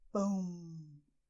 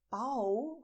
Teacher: And it's very important for you to pronounce it this way, "PÃO", so you feel the hot air going from your mouth to your nose. You have this feeling, and if you touch your nose, you'll feel "PÃO", the vibration here.